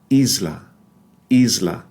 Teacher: it's voiced there's a slight Z voicing of it and that's because of the co-articulation or the assimilation with a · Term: z sounding s